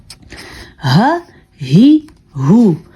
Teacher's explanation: چھاتی سے آواز نکلے گی اس ہا کی